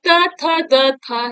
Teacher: दंत से उच्चारित होता है